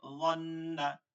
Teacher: গুন্না মানে ধরে রাখবো নাকের মধ্যে নিয়ে। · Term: ওয়াজিব গুন্না